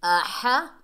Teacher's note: یہ بڑی ہا ہے، حلق کے درمیان سے ادا کریں گے